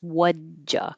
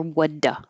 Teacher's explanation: you only hear the D, no T, and the D and the Y make a J. So I could spell it like this, wudja. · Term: contraction